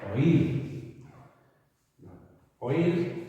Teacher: la primera la tenemos abierta, la segunda es cerrada, pero se convierte en abierta al llevar el golpe de voz, por lo tanto es un hiato, llevará tilde para marcar el hiato.